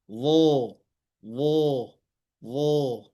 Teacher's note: Kemudian berada di antara dua gigi seri, atas dan bawah. Pangkal lidah dinaikkan karena dia huruf ist'la atau huruf yang tebal.